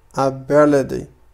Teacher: فهنا لاحظوا أن تي قمت بنطقها على شكل دي. هذا ما يسمى في اللغة الإنجليزية بالفلاب تي. · فبالنسبة لهذه النقطة فهي تخص American accent، لأن في اللغة الإنجليزية لدينا British accent و American accent. فبالنسبة لي American accent إذا جاءت تي بين two vowels sounds نقوم بنطقها على شكل دي. فهو القول ability، أقول ability.